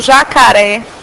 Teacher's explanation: é quando a minha sílaba que mais se prolonga quando eu pronuncio é a última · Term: oxítona